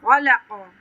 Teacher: खा पे कलकला, खा पे तफ़ख़ीम करेंगे, काफ पे तफ़ख़ीम करेंगे।